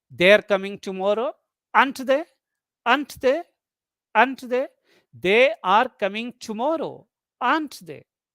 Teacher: Rising tone, a lesser degree of certainty, and it functions more like a request for information.